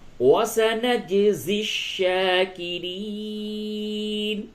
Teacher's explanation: جیم میں قلقلہ ہوگا، جیم ساکن ہے